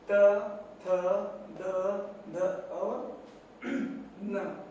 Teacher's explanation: उच्चारण स्थान क्या होगा, दंत होगा। त वर्ग में क्या क्या आएगा, त, थ, द, ध और न।